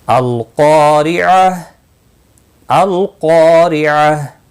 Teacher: क़ा अलिफ मद्दा है, 1 अलिफ के बराबर खींच कर पढ़ेंगे। क़ाफ मुस्तालिया है, पुर पढ़ा जाएगा। ज़ेर की वजह से बारीक पढ़ा जाएगा।